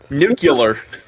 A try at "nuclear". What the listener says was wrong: He fucking killed the L in that word, man.